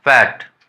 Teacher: फ का उच्चारण होता है, जो अपर लिप है लोअर टीथ दोनों में स्पर्श होने से होता है। दोनों आपस में अगर स्पर्श कर लेते हैं तो फ का उच्चारण होता है।